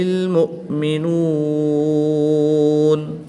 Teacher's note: تو یہاں پر وقف کی حالت میں مد عارض ہوگی، 2 سے 3 الف تک کھینچ کر پڑھیں گے